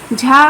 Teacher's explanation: तालव्य है, स्पर्श संघर्षी है, घोष है, अल्प प्राण है। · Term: महाप्राण